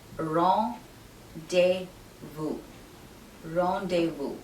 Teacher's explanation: The Z in this word is silent and the S at the end is also silent. And the REN is pronounced as ron, not ren.